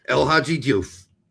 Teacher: You don't hear the E for very long when the English pronounce it. They just ramble right through that.